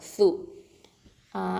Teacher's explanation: நுனி நா, அதாவது நுனி நாவு மேல் பற்களுக்கு கீழே வச்சு சொல்லணும்.